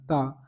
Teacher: ता जो होता है वो दन से बोला जाता है ता ता में जीभ में दांत जरूर लगेगा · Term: दंत व्यंजन